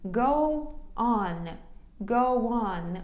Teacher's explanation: Воно нібито в нас з'єднується звуком W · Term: connected speech